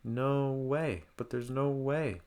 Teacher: So going up on no and then falling on way. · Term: falling intonation